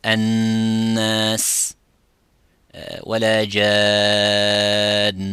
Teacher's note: Then you would say that any nun sakina or mim sakina as well has a shadda, such as الناس ولا جان. Nun with the shadda, mim with the shadda, this is the highest ghunna it could be, which is 2 counts